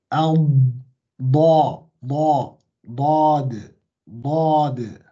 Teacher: dod is at the back of your tongue, yeah? By trapping the sound against the roof of your mouth.